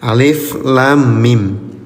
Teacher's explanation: Panjangkan bunyi 'lam' dan 'mim' selama enam hitungan. Ya, itu disebut mad lazim. · Panjangkan bunyi lam, bunyi mimnya selama 6 harokat ya, namanya mad lazim. Ini huruf muqatta'ah ya, dibaca huruf aslinya.